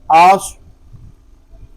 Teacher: آگے صاد، اس کو پر پڑھیں گے، اس میں بھی سیٹی کی آواز آئے گی۔ اس کو پر اس لیے پڑھیں گے کہ یہ حروف مستعلیہ میں سے ہے۔